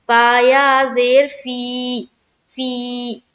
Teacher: या मद्दा को एक अलिफ की मकदार के बाकदर खींचकर पढ़ेंगे।